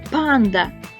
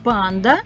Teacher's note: який перший звук у слові Панда глухий звук п